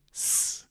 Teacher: Whenever you see that, just treat it like an S. A voiceless S.